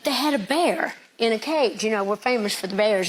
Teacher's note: I was told to listen for a sh sound on the s's